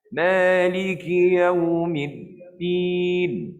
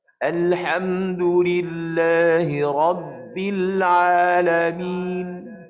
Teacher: Masa kita sebut Rabb tu, dia macam tersekat suara. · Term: syiddah